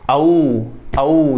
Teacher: फिर मैं बोल के देखता हूँ, देखो औ औ, जैसे मैं अ और ऊ बोल रहा हूँ, तो अ तो हमारा कंठ से हो रहा है, तो ऊ जो बोल रहा हूँ वो हमारा क्या से हो रहा है, होठों से हो रहा है